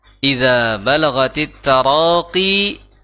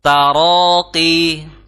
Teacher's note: di situ panjangnya 2 harokat qi, jangan sampai at-taraqi, ya, tapi at-taraqi.